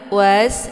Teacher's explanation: Was di sini ada sin sukun ya. Cara baca sinnya yaitu ditipiskan. Kemudian sifatnya dia itu adalah shafir. Jadi shafir itu anginnya itu lebih jelas.